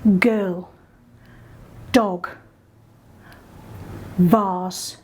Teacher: girl is coming from the back of your mouth if you think about what your tongue's doing but you're also then vibrating here to make it voiced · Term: voiced consonants